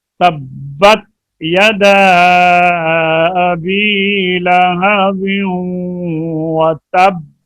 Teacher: پہلے ہم نے شد کو ادا کیا ہے اور اس کے بعد قلقلہ کیا ہے. یہاں پہ پہلے دبایا گیا ہے با کو اور دبانے کے بعد چھوڑا ہے، قلقلہ کیا ہے